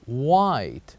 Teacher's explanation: here we keep the H silent in this word